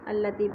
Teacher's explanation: نار اللہ الموقدہ، التی، التی پہ یا مدہ ہے، یا ساکن سے پہلے تا کے نیچے زیر ہے تو یہ مدہ ایک الف کے برابر کھینچ کر پڑھنا ہے